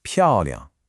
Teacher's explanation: So what you get is a strong falling 漂, followed immediately by a light, quick liang. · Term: neutral tone